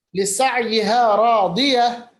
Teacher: راضیہ میں را کو پر پڑھیں گے کیونکہ اس پہ زبر ہے